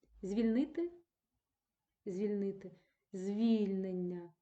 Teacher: наголос буде падати на корінь а не на суфікс